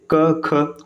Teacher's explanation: अब जब इनका उच्चारण आप करेंगे ना तो स्वर यंत्र में कोई भी कंपन नहीं होने वाला